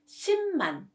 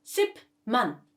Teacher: when 피읍 받침 meets 미음 or 니은 consonants, its pronunciation will change into 미음